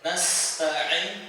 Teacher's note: Nas harus sin huruf sin itu harus berhembus nafasnya hames. Nastain jelas. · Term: hamas